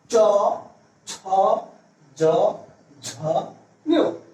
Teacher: চ বর্গের উচ্চারণ স্থান হচ্ছে তালু, জিহ্বার তালু। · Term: তালব্য ধ্বনি